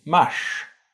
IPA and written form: maʂː (mars)